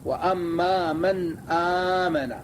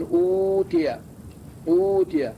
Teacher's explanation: هذه الامثال تمد بقدر حركتين حركتين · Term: مد البدل